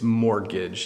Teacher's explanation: it's mortgage, you don't pronounce the T